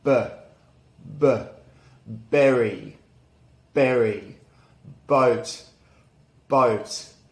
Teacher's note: look at the b sound it's unvoiced there's no vibration and our lips are together no teeth involved and it's a short sharp sound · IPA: /b/